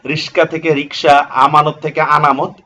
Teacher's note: ধ্বনি বিপর্যয় বলা হয় স্থান পরিবর্তন। শব্দের মধ্যে ব্যঞ্জন ধ্বনির পরস্পর স্থান পরিবর্তন হলে তাকে ধ্বনি বিপর্যয় বলে।